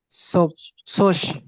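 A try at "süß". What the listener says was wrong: না বলেন জুস S হলো ডয়েচে জেড হলো ডয়েচে এস এটা মনে রাখবেন না জোশ না বলেন জুস বলেন উচ্চারণ করেন জুস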